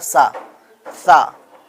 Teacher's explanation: سا جو ہے، سا کی آواز کو ہم کو ظاہر نہیں کرنا ہے، یہ زبان کی نوک جو ہوتا ہے وہ اوپر والے دانت کے جڑ میں لگے گا